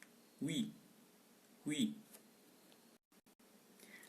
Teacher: Consonne glissant palatal et arrondi.